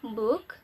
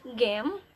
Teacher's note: Voice is sounds are made with a more or less regular vibration of vocal folds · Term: voice sounds